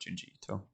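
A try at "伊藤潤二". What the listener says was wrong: word, the pronunciation of the sound I doesn't exist in Japanese culture. It's E. Like Tamagotchi, E.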